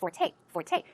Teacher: of the word Forte okay it's f o r t but it's pronounced Forte the stress goes on the second syllable